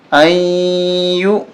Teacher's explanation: غنہ کریں گے، ناک میں آواز چھپائیں گے